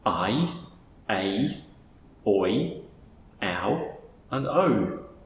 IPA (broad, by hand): aɪ eɪ ɔɪ aʊ əʉ